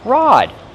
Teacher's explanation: Use the open ah sound like hot and stop.